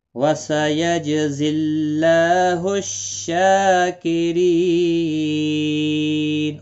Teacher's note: مد العارض وقفی ہوگا، 3 سے 5 الف یا 3 سے 5 سیکنڈ کھینچ کر وقف کریں گے